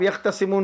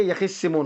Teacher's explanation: تا کا ادغام کر دیا گیا، تا کا ادغام کیا گیا صاد میں